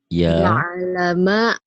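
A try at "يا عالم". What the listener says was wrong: Ini tasdid. Ya alamal. Ya-nya panjang tuh kan. Ya alamal.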